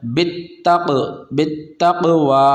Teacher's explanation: یہاں پر قاف حرف قلقلہ ہے اور قلقلہ جس حرف پر ہوتا ہے تو اس میں قلقلہ ظاہر کرتے ہیں